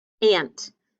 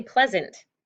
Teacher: over the A, we kind of need to mark it as that schwa sound